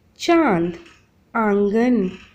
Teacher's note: अनुनासिक शब्द, इसका उच्चारण नाक और गले दोनों से होता है